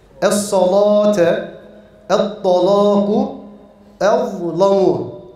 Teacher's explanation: Bunlar tefhim ile okunur. Ve bunlar kalın lamdır.